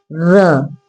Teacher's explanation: जीभ का अग्र भाग जब कई बार कंपन करे र देखिए र को बोलने में कंपन होता है जुबान में। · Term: लुंठित व्यंजन